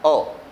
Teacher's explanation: एक ही स्वर ऐसा है जो जीभ के मध्य भाग से बोला जाता है और वह है अ, ठीक है। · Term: मध्य स्वर